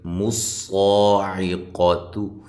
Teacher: یہاں صاد کو خوب موٹا کریں اور ایک الف کی مقدار کے برابر لمبا کریں، قاف کو موٹا کریں، تا کو باریک، عین کو واضح نکالنا ہے۔